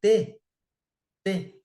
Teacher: reparem que a minha língua ela vai bater numa região do dente e vai o som vai sair com um obstáculo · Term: consoante